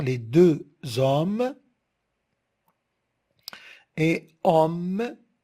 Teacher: Les deux hommes et homme, regardez, homme, la syllabe, elle est fermée par la consonne m. Alors, on a opté pour le o ouvert, parce que la syllabe, elle est fermée.